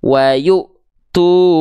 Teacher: Yu-nya di sini akan terhentak karena berjumpa dengan hamzah sukun yang punya sifat syiddah.